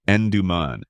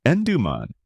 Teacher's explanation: in the UK it's pronounced En-duh-mun, with a softer duh in the middle